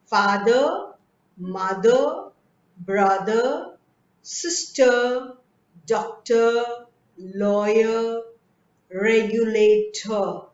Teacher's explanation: wherever you find r in the end of the word you just have to skip it you don't say that